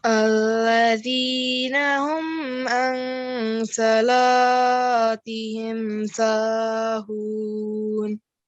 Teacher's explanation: Yes, so it's a tafkhim letter. So we pronounce sa thick and la normally.